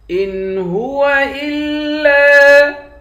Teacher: حمزے کو لام کے ساتھ ملا کر لام کو سختی کے ساتھ جمع کر پڑھیں گے۔ لام کے بعد الف ہے، الف حروف مدہ ہے، ایک الف کے مقدار کھینچ کر پڑھیں گے۔